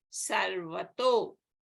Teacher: So the Visarga will be replaced by U, and a becomes O. So Sarvataha becomes Sarvato.